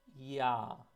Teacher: you start from a closed position in an e and the vowel quality changes to a more open one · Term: opening diphthongs